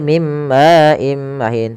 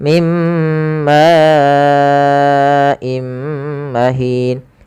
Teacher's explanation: Karena datang setelahnya hamzah, maka ini kita panjangkan sepanjang 4 harokat. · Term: mad wajib muttasil